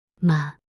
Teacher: neutral tone light and unstressed